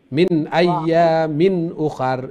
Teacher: তনউইনের পরে হামজা আইছে, এগুলা এজহার ক্লিয়ার সাউন্ড, কোনো গুণ হইতো না